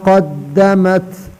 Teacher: زبان کے آخری حصہ اوپر نرم تالو سے لگا کر اس سے بڑا قاف ادا ہوتا ہے